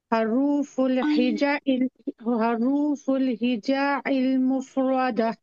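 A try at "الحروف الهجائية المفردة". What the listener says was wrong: हिजा आइन नहीं है, ये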